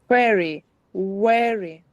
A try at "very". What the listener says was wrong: That's good. Show your teeth more for the first one.